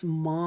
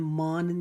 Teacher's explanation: اوپر ہم ایک الف کی مقدار اخفا کریں گے، یعنی کہ ایک الف کے جتنا اپنے ناک کے بانسے میں نون کی آواز کو روک لیں گے، نون کو ظاہر نہیں کریں گے